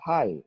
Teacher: We say high, meaning if you are to transcribe this one, there are only two phonetic units. So we have the sound for letter H and the diphthong I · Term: silent GH sound